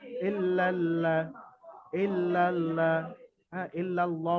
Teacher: তাসদি যেহেতু এসছে খালি আলিফ দুটো বাদ দিয়ে লামের সঙ্গে লামকে মিলিয়ে পড়তে হবে